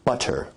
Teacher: Now as compared to in received pronunciation where you say butter, that involves a full T stop